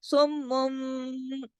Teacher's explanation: نون کی آواز نہیں رہتی، بلکہ وہ میم کی آواز میں بدل جاتی ہے، اس کو کہتے ہیں اقلاب کا قاعدہ۔